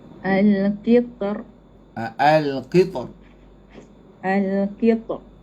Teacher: Sebab huruf ta ni dia syidah. Huruf ta ni dia syidah. Dia qalqalah, dia syidah. Dia kena potong suara dia.